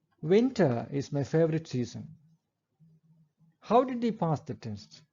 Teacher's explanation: all these sentences end with a falling tone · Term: falling intonation